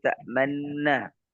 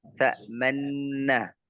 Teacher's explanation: Ismam itu artinya dia mengisyaratkan dengan bibirnya bahwa ini harusnya dia ta'manunna jadi ta'manna.